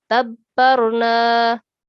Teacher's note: here ba mushaddad, so it should be pronounced with a stress. Okay, clearly but with a stress.